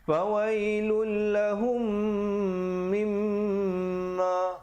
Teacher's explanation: mim, di situ didengungkan juga 2 harakat, hukumnya wajibul gunnah min bersabdu